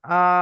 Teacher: খারা জাবার আলিফ মাদ্দার সমতুল্য, এক আলিফ পরিমাণ টান দিয়ে পড়তে হবে